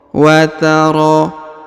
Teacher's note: Huruf ro dipanjangkan 2 harokat karena yang pertama di atas terdapat alif kecil, yang kedua terdapat alif bengkok atau alif maksurah ya.